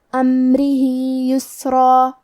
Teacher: لہو من کلمت امرہی میں میم ساکن کو ظاہر کریں گے، حرف الرا کے نیچے زیر ہے تو را کا حکم ہے ترقیق، ہمیں حرف الرا کو پتلی آواز میں پڑھنا ہے۔ ہا کے نیچے کھڑی زیر ہے، یہاں بھی حکم ہے مد صلہ صغرا، تو ہم اپنی آواز دو مد کے برابر لمبی کریں گے